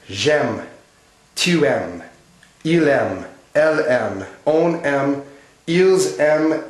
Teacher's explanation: The endings for first person singular, second person singular, third person singular, third person plural are all silent.